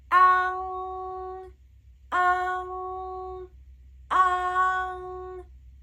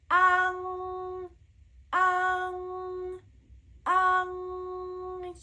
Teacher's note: It's a very wide, right, and a nasal sound.